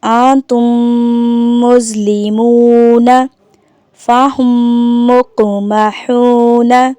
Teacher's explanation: میم ساکن کے بعد دوسری میم آ جائے تو میم ساکن میں ادغام شفوی ہوگا، یعنی غنہ کریں گے۔ مثال کے طور پر انتم مظلمون فہم مقمحون۔